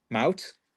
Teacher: the H is silent. We just do the T sound.